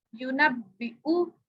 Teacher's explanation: तो हमने वाव तो नहीं पढ़ना, खाली हम हमजा पढ़ेंगे।